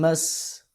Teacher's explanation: سین حروف اسفیریہ میں سے ہے سیٹی کی آواز